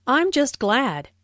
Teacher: notice the stress on glad just is used for emphasis before an adjective here how about you notice the intonation Falls here because the